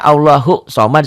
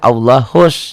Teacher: gampangnya alif lam ini tidak dibaca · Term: alif lam syamsiah